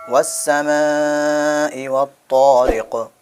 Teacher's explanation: یہاں پہ بڑی مد ہے، ان کو تھوڑا کھینچنا ہے